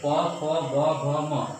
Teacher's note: उसके बाद पवर्ग है प फ ब भ म, सारे को ओठ से बोला जाता है